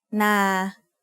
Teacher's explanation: a midtone is pronounced at a flat pitch in the middle of your regular vocal range